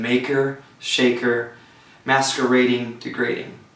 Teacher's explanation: The next one is feminine or two rhyme. A two-syllable rhyme with the stress on the penultimate syllable. The vowels and inner consonants must match as in maker, shaker, masquerading, degrading.